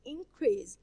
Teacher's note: If we capitalize the second part of the word increase, well, think it's a verb. So we stress the second part of the word increase.